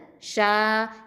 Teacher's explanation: இந்த ஷீனுங்கிறது ஏற்கனவே சொன்னேன், வசத்துல் லிசான் நடுநாவு எழுத்து. ஷீன் ஃபத்தா அலிஃப் மத்து ஷா.